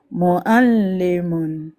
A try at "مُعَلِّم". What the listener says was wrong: C'est pas Mo'a. Appuie encore, va le chercher. Il faut aller chercher la lettre Aïn.